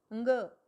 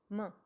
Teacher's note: इनके उच्चारण करने में मुंह के साथ साथ हमारी नाक का यूज़ भी होता है, नाक का प्रयोग भी हम करते हैं, इसलिए इनको नाक में भी बोले जाते हैं, इसलिए इनको अनुनासिक कहते हैं।